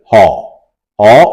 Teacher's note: জিহভা মূল কোমল তালুর কাছাকাছি স্পর্শে হ এর উচ্চারণ আমরা করতে পারি